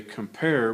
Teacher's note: we'll find the stress Mark is on the second syllable · we notice that the pair is stressed more